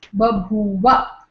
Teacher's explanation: When you combine, it becomes Babhuva. It is the first one loses its aspiration, it becomes Alpaprana. So, this is Grassmann's law.